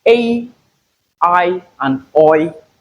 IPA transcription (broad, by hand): eɪ, aɪ and ɔɪ